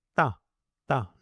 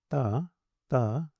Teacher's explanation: You see, if I say ta ta this ta ta is closer to da. So, in English it's not so common to pronounce clear dentals. We pronounce a little bit behind the teeth, so to speak. So, in Sanskrit we should try to be clear that it is ta ta ta.